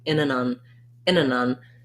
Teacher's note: most of the time, we just say it with more of a syllabic N.